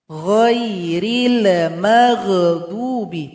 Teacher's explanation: lam dan huruf ghain tidak boleh dipantulkan